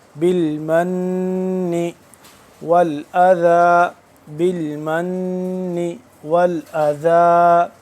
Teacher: غنہ کریں گے نون مشدد پہ